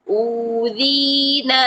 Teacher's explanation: تینوں حرف مدہ موجود ہیں، واو مدہ، یا مدہ، الف مدہ، تینوں کو ہم نے 2 حرکات لمبا کرنا ہے